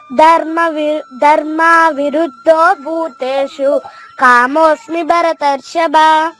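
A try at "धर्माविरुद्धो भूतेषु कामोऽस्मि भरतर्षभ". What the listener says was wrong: Right, ఇంకా బాగా నేర్చుకోవాలి మీరు.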